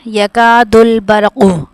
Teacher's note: اب را کو موٹا پڑھے کیونکہ اس سے پہلے زبر ہے